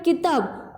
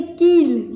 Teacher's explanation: जब छोटी की मात्रा पढ़ते हैं तो हम बोलते हैं की, लेकिन जब बड़ी की मात्रा पढ़ते हैं हम तो हम उस पर थोड़ा सा जोर डाल के बोलते हैं की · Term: बड़ी ई की मात्रा